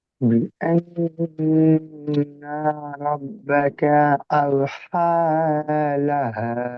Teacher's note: বড় হা গলার মাঝখান থেকে, লাহা হা ছোট হা গলার শুরু থেকে, তাহলে এই দুটো পার্থক্য করে বলতে হবে।